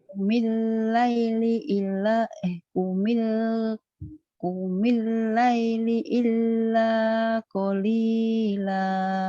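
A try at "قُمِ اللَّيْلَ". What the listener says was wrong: Kumil laila ya bukan laili. Kumil laila. Kumil kumil laila illa qalila. Nih, kumil laila illa qalila.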